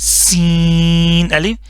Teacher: सीटी की आवाज निकालनी है लाजमी सीन अलिफ स नहीं पढ़ना या सा का सा नहीं